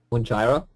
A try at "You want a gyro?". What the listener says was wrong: Oh, it's still short. You want a gyro?